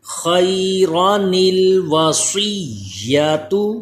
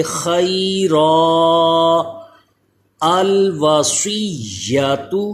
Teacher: لیکن جب وقف کریں گے وقف کی حالت میں یہ نون کتنی نہیں پڑھا جاتا بلکہ اس الف کے اوپر جو اس کی اصل زبر تھی وہی پڑھی جائے گی